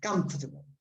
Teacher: So the syllable in the middle almost disappears.